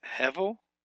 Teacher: Hevel, that's two segols up in there, and the accent's on the first syllable, not the last syllable